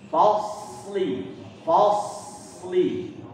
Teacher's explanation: ketemulah huruf shad yang bersukun, ya. Lebih tebal daripada huruf shad yang tidak sukun